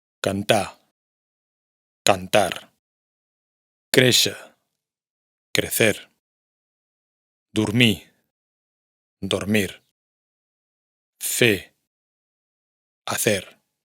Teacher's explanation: la r final no se pronuncia en los infinitivos verbales